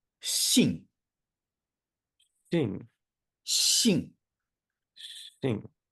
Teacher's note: when you see an X in the pinyin system, it makes a sound that sort of is between the S and the SH sound.